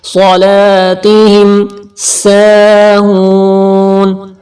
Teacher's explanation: صاد موٹا کرنا ہے ریڈ کلر، لا نیلا کلر کھینچ کے پڑھنے کی نشانی ہے کیونکہ الف سے پہلے زبر ہے.